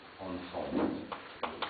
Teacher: ici l'accent va être sur la deuxième syllabe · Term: accent tonique